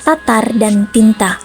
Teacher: t memiliki ciri mati oral apikodental dan plosif